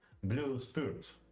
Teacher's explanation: has two equal stressed beats, as in blue spirit